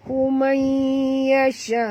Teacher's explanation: Nun mati bertemu ya, kita kena masukkan bunyi nun ke dalam ya disertai dengung 2 harakat ya, idgham ma'al gunnah